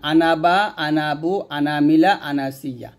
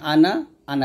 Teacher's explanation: এই চারটা আনা থেকে আপনি টানবেন যেমন আনাবা আনাবু আনামিলা আনাসিয়া এই চারটা আনা টেনে পড়তে হয়